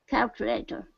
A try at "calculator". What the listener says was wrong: Nice. Perfect.